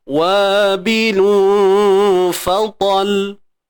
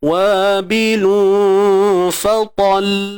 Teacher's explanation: yang pertama saya matikan lam sukun macam biasa. Yang kedua baru saya buat yang bersabdu nah. Menampakkan ada sabdu tu.